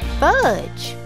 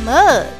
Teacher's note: the short u vowel sound is uh as in fudge and uh as in mug